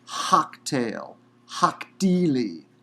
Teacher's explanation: long E-class vowel between the second and third radicals